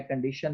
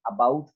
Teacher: the center of the tongue is raised towards the roof of the mouth between the hard and soft palate to a height between the half closed and half open position. The lips are spread. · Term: schwa